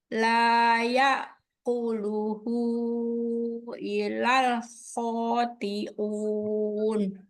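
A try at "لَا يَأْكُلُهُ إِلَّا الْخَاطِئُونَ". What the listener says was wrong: Aduh, tidak boleh baca ilal ya. Artinya jauh. Illa sama illa ini artinya jauh banget. Nggak boleh. Illal khati'un.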